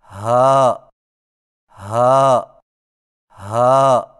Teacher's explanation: ہا کی ادائیگی میں زبان کی جڑ کو حلق کی طرف دبائے بغیر باریک اور بغیر رگڑ کھاتی سانس میں پڑھیں